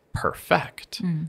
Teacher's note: if I put my stress on the second syllable perfect this is actually the verb form like I would really like to perfect my writing style and